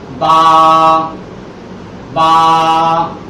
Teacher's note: বা বার উচ্চারণ হচ্ছে 2 ঠোঁটের ভিজা জায়গা লাগাইয়া একাধিক টেনে বলতে হবে